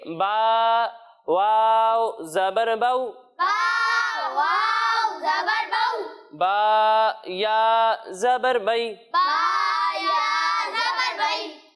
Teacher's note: تو اس کے بارے میں یہ ہے کہ حروف لین کو ہم بغیر کھینچے بغیر جھٹکا دیے پڑھیں گے